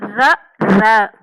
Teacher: மேல் அன்னத்தின் முதல் பகுதியை தொட்டு வருடுவதால் ர ரகரம் தோன்றும் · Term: இடையின ரகரம்